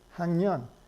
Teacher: the K is becoming eng in front of a nasal